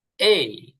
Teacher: এই মানে বাংলায় এ রস্য ই। রস্য ইটা পুরোপুরি হবে না, হালকা রস্য ই যেটা বলে এই।